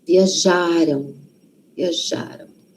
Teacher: O passado, então, a sílaba tônica, a sílaba forte, está antes.